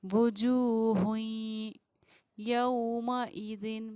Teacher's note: ادغام ناقص کا قاعدہ ہوگا اور ہم اخفا اور غنہ یہاں پر کریں گے۔ وجوہ یومئذ، ہوئیں، اس طریقے سے پڑھیں گے ہم، اخفا غنہ دونوں چیزیں ہماری ہوں گی۔